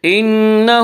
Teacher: انہ نون مشدد غنہ ہوگا، غنہ کی مقدار 1 الف ہے۔ انہ ہا کے اوپر الٹا پیش ہے، الٹا پیش قائم مقام ہے واو مدہ کے، اس لیے الٹا پیش کو 1 الف کے برابر کھینچ کر پڑھیں گے۔